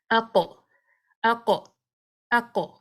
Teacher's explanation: قلقلہ اس کا ہیوی ہوگا چونکہ اس کا یہ جو حرف ہے وہ ہیوی ہے، استعلا حروف میں سے ہے۔ تو قا، قی، قو، قا، قی، قو، اس کی ہیوینس کو برقرار رکھنا ہے، فتحہ میں بھی، کسرہ میں بھی اور دمہ میں بھی۔